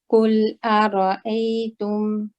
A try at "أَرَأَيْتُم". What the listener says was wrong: Your ta can also be lighter. At the moment you're saying like tu. I want to use the very tip of the tongue. Yeah, so don't use a wide area. Press with just the very tip. Tu, ta, ti, tu, tum. قل أرأيتم.